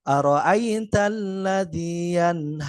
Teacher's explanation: Jadi nun sukunnya dibaca jelas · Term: izhar halq